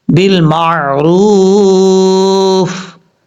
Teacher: بالمع میم کے بعد جو عین ہے اس عین کو نارمل طریقے سے پڑھنا ہے بھاری جھٹکے کے ساتھ نہیں پڑھنا